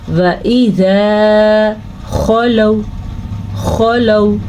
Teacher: اب یہ جو واو ہے یہ واو مدہ نہیں ہے اس لیے اس کو ہم کھینچ کے نہیں پڑھیں گے یعنی کہ لمبا کر کے نہیں پڑھیں گے. واو ساکن سے پہلے حرف پہ زبر ہو تو وہ واو لین ہوتی ہے نرمی سے پڑھی جاتی ہے اور بغیر کھینچے پڑھی جاتی ہے